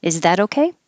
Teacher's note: The T changes to a D and connects to the O.